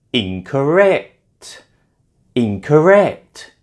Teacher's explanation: is stressed on the third syllable.